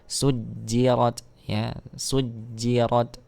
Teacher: di sini ada huruf Jim yang bertasydid maka diberikan sifatnya dulu ya ditahan dulu